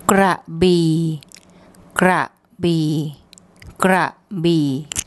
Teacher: Now let's look at the second syllable, and we have the bo by mai, which makes a B sound, and then the long E vowel. And this bo by mai is a mid-class consonant, and we have the first tone mark, so that actually gives a low tone.